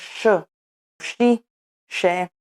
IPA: ʃ